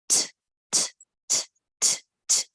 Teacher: No movement. Only the tip of your tongue is touching your upper palate, the base of the teeth of upper jaw. And it is again, if you keep your hand on your throat, voiceless. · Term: letter T sound